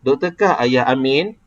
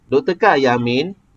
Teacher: Dia akan naik, lepas tu turun kepada 1, lepas tu dia naik balik kepada 4. Macam doktor kah ayah Amin, maknanya dia akan turun, lepas tu dia naik balik. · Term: intonasi ayat pertanyaan